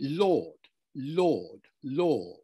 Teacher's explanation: in present-day rp it would be lord lord law with an or sound